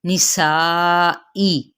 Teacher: من یہاں پہ نون پہ اظہار ہوگا، خطبۃ النساء تو پہ قلقلہ ہوگا اور نون پہ غنہ ہوگا، اور نساء کو 4 حرکت لمبا کریں گے، حمزہ کی زیر کو واضح کریں گے، نسائی۔